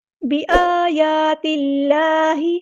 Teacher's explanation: اللہ کا جو لام ہے وہ ہم باریک پڑھیں گے، اس میں جلالت ترقیق ہو رہا ہے